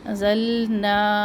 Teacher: انزلنا، نون پر اخفا کرے. انزلنا، یہاں پر ہے مد، بڑی مد ہے، مد منفصل جائز، 3 الف کے برابر، اس کو لمبا کرے